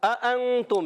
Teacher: دونوں حمزہ خوب واضح کر کے پڑھیں گے، خوب تحقیق کے ساتھ خوب ظاہر کر کے پڑھیں گے، اس میں تسہیل نہیں کریں گے۔